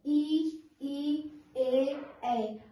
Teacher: हमारा जीभ का आगे का भाग इसमें यूज हो रहा है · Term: अग्र स्वर